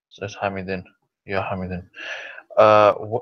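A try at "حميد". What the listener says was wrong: That's still, if you say Ham, if you're saying Hamidun or Hamidin, that's still Tanween. Still, you've still got an N sound or a noon sound on the end. So to lose the Tanween means to lose, to go from two Dhammas to one Dhamma. Hamidu.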